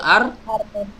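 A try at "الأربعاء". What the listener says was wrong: arbi'a bukan arba'a. Banyak di kasroh.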